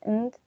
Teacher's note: we can delete the D at the end of end